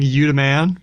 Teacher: it's got the duh, the TH stopping for duh, but it also has zero copula, which is a showcase feature of African American English